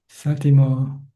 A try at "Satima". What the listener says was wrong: Satima with an A.